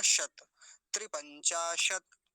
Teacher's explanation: शत तालव्य शकार का ध्यान रखेंगे, तकार हलंत है तो वहीं रुक जाएंगे